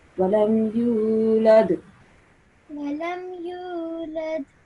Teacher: walam yulad, you have to prolong this sound of you for like about 2 seconds. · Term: prolong this U sound